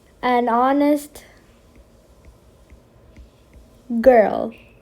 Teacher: the H is silent. You could only hear the O in here.